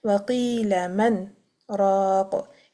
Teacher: Imam Hafs has applied the sakt on the man to avoid merging of the noon sakina into the ra after it. · This is sakt wajib. We must do the breathless pause on the man.